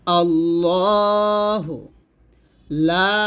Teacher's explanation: লাতে তিন লিপ টান দিবেন